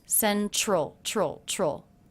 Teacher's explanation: I'm making more of a CH sound here instead of a T sound for the T in central